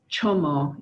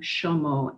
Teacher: what we find is the CH sound is sh in southern Kenya